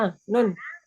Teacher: Nun, ya, huruf nun. Huruf nun, ujung lidah ketemu dengan tempat tumbuhnya gigi seri atas. Gusi. Dia tidak ada aliran suara.